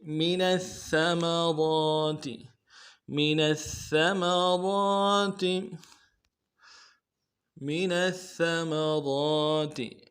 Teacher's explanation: من الثمرات میں نون کو سا کے ساتھ ملانا ہے، تشدید ہے، زور دینا ہے، اور را کو موٹا ادا کرنا ہے. را کے اوپر کھڑا زبر ہے، ایک الف مقدار میں کھینچنا ہے.